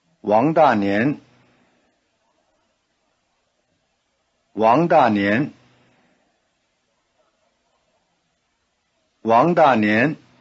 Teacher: repeating the full name rising falling rising